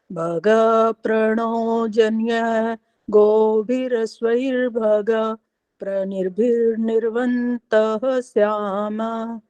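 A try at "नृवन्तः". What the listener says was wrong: एक तो निर्वंता सारे बोलते जा रहे हैं, निर्वंता है नहीं यहाँ पर, नृवंता है ये।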